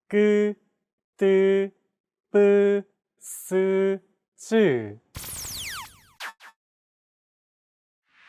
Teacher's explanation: 그, 크, 느, 트, 브, 프. Tense consonants, also known as double consonants, are pronounced with a stiffer voice. More pressure is built up and it's released much more quickly than plain sounds.